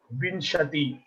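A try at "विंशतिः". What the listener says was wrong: Vimshatihi. Visarga, and you have to pronounce the visarga.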